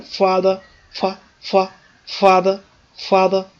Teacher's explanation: the first syllable is stressed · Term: stressed syllable